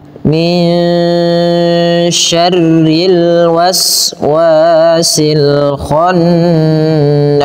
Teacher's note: rinya tipis karena dia berharakat kasrah